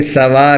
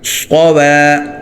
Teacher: صاد موٹا ہو واو باریک ہو